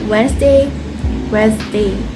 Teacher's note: with the D sound often softened